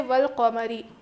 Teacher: یہاں دیکھیے الف لام اگر حروف قمری کے شروع میں ہو تو الف اور لام کو نہ پڑھیں گے الف کو نہیں پڑھیں گے بلکہ لام پڑھا جائے گا